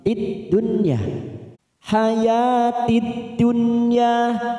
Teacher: ada nun sukun bertemu ya, namanya idhar wajib. Kita baca jelas tanpa mendengung.